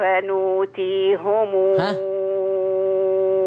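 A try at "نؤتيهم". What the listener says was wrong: نوتيهم، خلي بالك من كسر الهاء.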